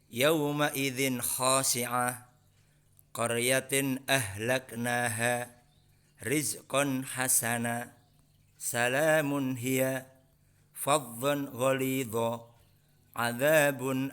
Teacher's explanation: contoh-contoh bacaan idhar halqi yang kita baca tanpa adanya mendengung tetapi dengan jelas